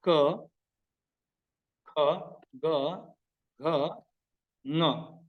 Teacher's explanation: the letters which are pronounced from the place named Kantha or the throat are Ka, Kha, Ga, Gha, Nga.